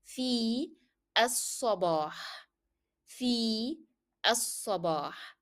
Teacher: you find that lam here in as-sabah is a shadda letter, so we drop the pronunciation of lam.